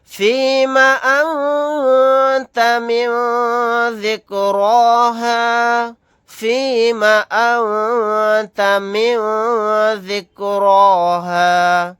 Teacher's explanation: نون ساکن کے بعد تا ہے، یہاں پر اخفا کا قاعدہ ہوگا ، نون ساکن کے بعد ذال ہے، یہاں پر بھی اخفا · را کو موٹا یعنی پر پڑھیں گے